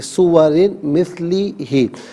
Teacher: سورن مثلی ہی، سورن میں را کے نیچے دو زیر کی تنوین ہے، باریک پڑھیں گے اور تنوین کو مثلی ہی کے میم کے ساتھ ملائیں گے اور میم کی آواز کو غننے کے ساتھ ادا کریں گے۔ یرملون کا قاعدہ یہاں پر اپلائی کیا جائے گا۔